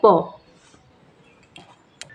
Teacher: আমরা প লিখছি পটি ব্যঞ্জন ধ্বনি কিন্তু স্বরবর্ণের সাহায্যে উচ্চারিত হয়েছে প শেষে আমরা কিন্তু একটি স্বরবর্ণের উচ্চারণ করছি সেটা হলো অ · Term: নিহিত স্বরধ্বনি